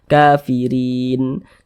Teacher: kalau kita berhenti, berwakaf kita tepat di huruf nun, kita baca kafirin. Jangan dibaca kafirina, jangan, tapi dibaca kafirin.